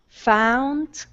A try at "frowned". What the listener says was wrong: Okay, give me an R. Frowned.